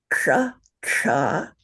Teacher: you make your tongue flat and pull it way back in your mouth so that the flat of your tongue is up against that little bump in the back of the roof of your mouth